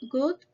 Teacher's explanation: It's a closed mid sound